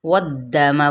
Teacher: علی، لئی پہ یا لین کا قاعدہ، علیکم المیتۃ یہاں پہ بھی یا لین کا قاعدہ، والدم ولحم الخنزیر یہاں پہ واو کو واو کی زبر کو دال کے ساتھ ملائیں گے، دال کے حرکت کو لمبا نہیں کریں گے